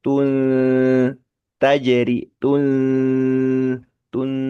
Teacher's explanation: Jadi gantung di antara dua posisi ta dan posisi nun · tun agak digantung lidah itu ketika ikhfa